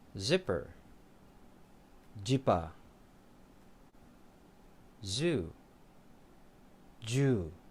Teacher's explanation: both change into a J sound, which becomes very short